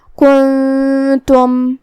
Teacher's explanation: कलिमत कुन्तुम यहाँ नून साकिन है फिर हर्फ ता आता है तो यहाँ हुक्म हुआ इख्फा। इख्फा का माना है छुपा देना, तो हम नून को बगैर ज़ाहिर किए हुए लेकिन गुन्ना के साथ ये हुक्म को अदा करेंगे।